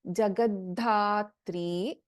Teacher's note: In Jagadhatri, we have Alpaprana Da and we have Mahaprana Dha.